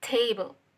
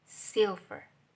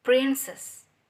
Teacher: The stress is mostly placed on the first syllables.